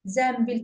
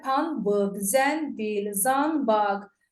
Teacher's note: Zənbil yazılır, tələffüzdə zənbil kimi deyilir. N-dan sonra b, m samiti gələndə n-m kimi tələffüz olunur. Ona görə də pambıq, zənbil, zanbaq, n kimi yazılır.